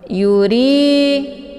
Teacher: untuk hukum bacaan ra-nya ditipiskan karena ra ini harokatnya kisrah.